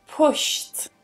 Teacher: when I have a voiceless sound or unvoiced sound, we pronounce that final ed part as a t, t, because t is also voiceless.